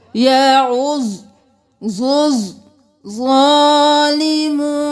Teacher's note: ضاد پر تشدید، ظا پر تشدید، دونوں کو 2 بار